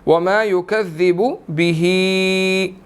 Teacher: हा के नीचे खड़ी ज़ेर है और छोटी मद भी है, तो 2 to 3 सेकंड्स इसको हमने लंबा करना है